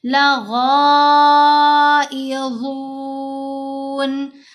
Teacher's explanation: غین کے اوپر یہ جو مد ہے یہ مد متصل ہے، 5 حرکات کی مقدار ہم نے لمبا بھی کرنا ہے، اور حروف مستعلیہ میں سے ہے غین بھی اور غا بھی، دونوں کو پر پڑھا جائے گا، دونوں کو موٹا پڑھا جائے گا